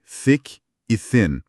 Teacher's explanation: Ambas usam a ginástica do TH no começo, com a língua sobre os dentes.